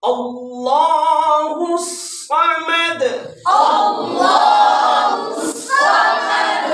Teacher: اب یہ صاد ہے, سیٹی کی آواز صفیریہ میں سے ہے, اور دال ہے, اس پر قلقلہ بھی کرنا ہے. اور اللہ کا حرف لام جو ہے اس کو موٹا کر کے پڑھنا ہے.